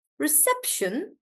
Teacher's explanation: So the stress is on sep.